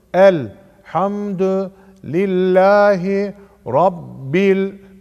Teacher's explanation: B'yi lama bağladık. İzhar-ı kameriye oldu. Yani bu lamı burada okuyoruz.